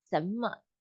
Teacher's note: 什么 is second tone and neutral tone